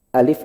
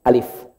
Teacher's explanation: alif itu A-nya jangan naik, jangan panjang, cukup alif